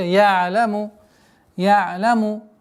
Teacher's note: не нужно резкая такая остановка айна, потому что это является ошибкой. Я'ляму, такое скользящее остановка.